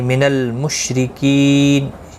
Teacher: را زیر کی وجہ سے باریک پڑا جائے گا. کی یا مدہ ہے، ایک الف کی مقدار کے برابر کھینچ کر پڑھیں گے.